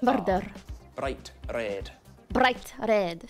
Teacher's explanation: would be very rare to hear murder with big long RS it's much more common to roll the r just for one roll it's called a tapped